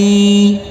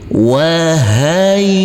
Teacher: huruf ya kita tekan dan kita tahan saja dengan 2 harokat, karena di atas huruf ya ada tanda baca tasydid.